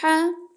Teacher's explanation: حا کہاں سے ادا ہوتا ہے؟ حلق کے وسط سے۔